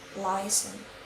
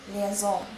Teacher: American puts stress in the first syllable and the British puts stress in the second syllable.